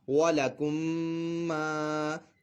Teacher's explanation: اب یہاں پہ میم ساکن کا قاعدہ ادغام شفوی ہو رہا ہے کہ میم ساکن کے بعد دوسری میم آ رہی ہے، تو یہاں پر ادغام شفوی کا قاعدہ ہوگا، میم ساکن میں غنہ کیا جائے گا. اور یہاں پہ میم مشدد ہے تو ویسے بھی غنہ ہونا ہے.